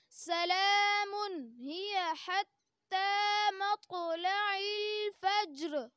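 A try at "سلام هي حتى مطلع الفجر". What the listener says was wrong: سلام میں جھٹکا لگ رہا ہے، اس جھٹکے کو ختم کریں. سلام، سلام ہی.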